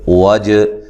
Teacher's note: جیم پہ قلقلہ کرنا ہے، جیم کو ہلا کر پڑھنا ہے